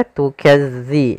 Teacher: za makhrajnya agar sempurna kita lafalkan dari ujung lidah kita menempel dengan gigi sari atas.